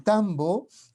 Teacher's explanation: en tambo vemos un fenómeno parecido al que observamos en inga porque tenemos esta sonorización